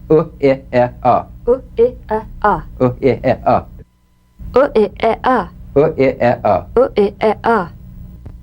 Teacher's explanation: facial posture the structural shape is now reduced with a minimum these sounds are all short staccato grunt like sounds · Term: neutral vowels